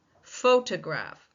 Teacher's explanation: We do not see a secondary stress syllable in photograph.